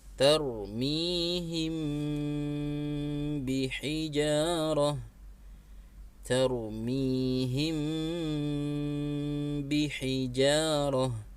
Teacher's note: Mim ditahan 3 harokat dibaca gunnah.